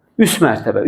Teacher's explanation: Özündən sonra samitlə başlanan şəkilçi qoşulanda nə oldu? T düşdü.